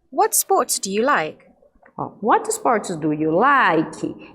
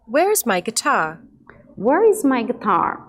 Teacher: E perguntas com palavras como what, where, when e how normalmente possuem diminuição da entonação no final, que são as palavrinhas interrogativas. E aí, quando eu faço o uso de perguntas com palavrinhas interrogativas, a entonação cai no final